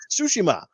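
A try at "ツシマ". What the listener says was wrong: no, it's not silent. You have to pronounce the T with the C, with the S.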